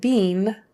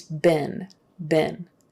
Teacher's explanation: that been is pronounced B-I-N as if it were sit, fit, been, B-I-N, been.